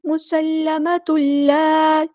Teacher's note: تا کے اوپر جو تنوین ہے اس کو لام میں مدغم کر دیں گے ، ادغام ہوگا، ادغام بلا غنہ یعنی ادغام کامل، مسلمۃ اللہ،